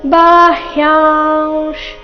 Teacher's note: ಇಲ್ಲಿ ಬಾ ಆದ ನಂತರ ಹ್ಯ ಇದೆ ಅರ್ಧ ಹ ಪೂರ್ತಿ ಯ ಬಾಹ್ಯಾಂಶ್ ಯ ನಂತರ ಬಂದಿರೋ ಅನುಸ್ವಾರದ ಉಚ್ಚಾರಣೆ ಅನುನಾಸಿಕ ವ ರೀತಿ ಬರಬೇಕು